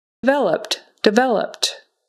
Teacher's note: Developed, developed. So that ED on the end becomes just a T sound